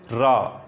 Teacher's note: आपका जीभ हल्का सा मुड़ेगा और कंपन होगा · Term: प्रकंपित